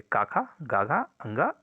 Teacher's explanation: का वर्ग के जितने भी वर्ण है जैसे का खा गघ अंगा इन सभी का उच्चारण स्थान कंठ है